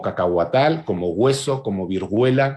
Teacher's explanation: el refuerzo velar ante diptongo